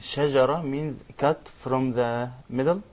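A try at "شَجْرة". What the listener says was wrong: No, shajara with a vowel fatha on the jim is different than shajra. In this case, we're talking about the shajra, which is the middle of the mouth. So when we say The letters which are shajriya, because they come from the middle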